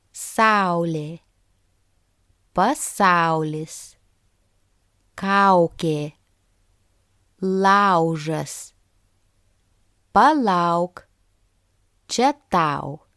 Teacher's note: When the stress falls on the first vowel sound A, it's pronounced as au.